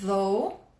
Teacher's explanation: Lembrando que começa com TH, é um TH vozeado, o som é feito aqui, a língua tem que aparecer para produzir o som inicial correto.